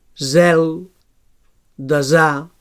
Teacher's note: So alveolar fricatiu sonor.